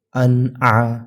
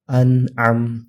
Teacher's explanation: تو نون ساکن اور تنوین کے بعد حروف حلقی میں سے کوئی حرف آئے تو ہم نون کی آواز کو صاف ظاہر کر کے پڑھیں گے، کلیئرلی پڑھیں گے، جلدی پڑھیں گے، اور غنہ نہیں کریں گے اور اخفا بھی نہیں کریں گے.